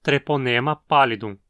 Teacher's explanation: O ne na penúltima sílaba é longo.